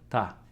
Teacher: When this consonant called tigut is placed at the beginning of a word, it sounds more like a soft T rather than a D. So it's not going to be da like in Russian, but rather ta.